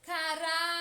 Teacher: Percebam que a sílaba que mais demora a ser pronunciada é ra. Portanto, ra é a sílaba tônica.